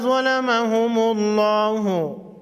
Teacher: لفظ اللہ سے پہلے حرف پر پیش ہے، لفظ اللہ کے لام کو موٹا پڑھیں گے